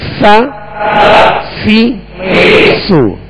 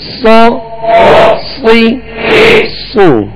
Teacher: سین کو باریک، صا کو موٹا پڑھیں گے